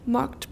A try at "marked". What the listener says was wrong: Everyone marked. A lot of you say marked. You're missing the R after A sounds, especially marked.